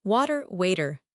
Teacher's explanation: Americans turn T's into D's all the time. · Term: flap T